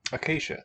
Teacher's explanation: The S, Y have fused into a single sound, sh.